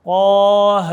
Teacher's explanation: ٹھیک ہے، اور ایک یہاں پر ہے کھڑی حرکات۔ کھڑی حرکات 1 الف کی مقدار کھینچیں گے، اس کو مد اصلی بھی کہتے ہیں۔